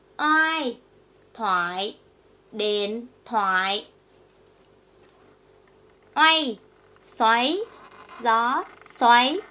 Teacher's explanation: Khi đọc hai vần oai và vần oai, các con lưu ý hai vần này đều có âm o đứng đầu. Khi đọc các con nên tròn môi nhé các con.